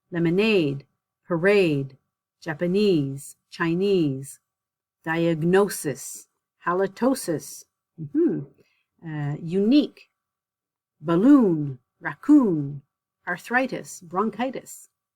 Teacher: the words in this section they the stress is on the suffix so at the very end